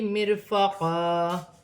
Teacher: را ساکن سے پہلے زیر ہے تو را باریک پڑھی جائے گی